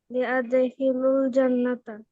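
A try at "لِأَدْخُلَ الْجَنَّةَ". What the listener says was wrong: খুলি শেষে জের হয়ে যাবে এখানে লিয়াদখুলিল জান্নাতা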